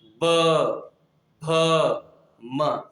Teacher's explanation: दोनों ओठों का स्पर्श हो रहा है, इसलिए इसे कहा गया ओष्ठ।